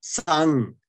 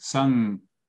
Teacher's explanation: You don't close your lips with sang. So you don't. So the lips are separate. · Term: half nasal